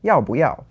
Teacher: which is both fourth tones, so you have to change the bù to bú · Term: tone change